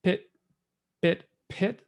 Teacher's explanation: that aspiration distinction with that puff of air